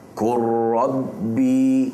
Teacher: lam ni dah Tak bunyi dah dia terus masuk pada ro ni sebab ra ni ada sabdu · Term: idgham mutaqaribain